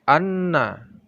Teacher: hukum nun dan mim tasydid ini adalah gunnah atau didengungkan